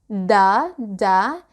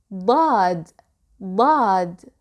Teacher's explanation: So how can you pronounce Dad? Well, the articulation point of Dad is similar to that of D or Dal, but a little bit wider. So to pronounce Dad, you can start with Dal, like Da, Da, and lift the back of your tongue.